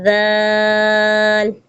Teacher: زبان دانتوں کے بیچ میں لائیں گے